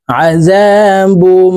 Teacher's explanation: এই বা তাসদীদ ওয়ালা মিমের সাথে গুন্নার সহিত পড়তে হবে